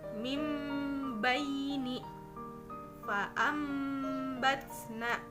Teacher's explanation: Sedangkan menurut istilah iqlab adalah perubahan bunyi nun sukun atau tanwin menjadi mim yang tersembunyi yang disertai dengan dengungan